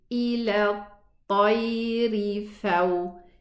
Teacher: I drop the pronunciation of the mad, the elongating letter. So I say ila tayri faw. · This lam is dropped, and we mentioned this several times before. It's a sukoon and a sukoon after it, so I neglect pronouncing the lam, and it doesn't have any sign attached to it.